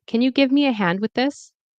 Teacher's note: So we have the stress on give, hand, this.